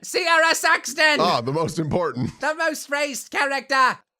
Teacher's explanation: She's super nasal. All of the air is going like up and out of my face. There's also a very, very, very slight accent.